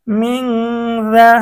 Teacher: মিম নুন জের মিং, জাল জবর দা, মিং দা। নুন সাকিন, নুন সাকিনের পরে ইকফার হরফ জাল আসছে, গুন্না সহ পড়তে হবে।